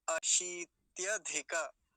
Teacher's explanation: अब आगे देखेंगे, ये जो शब्द है इसको कैसे उच्चारण करेंगे, अशीत्यधिक, अशीत्य, अशीत्य, पहले तालव्य शकार, उस पर दीर्घ ईकार है, बड़ी ई की मात्रा है, तो लंबा खींच के बोलेंगे थोड़ा सा, क्या हो जाएगा, अशीत्यधिक, और इसके साथ ही इसको भी जोड़ देंगे, धिका शब्द जो है, अशीत्यधिक, अशीत्यधिक ऐसा हो जाएगा।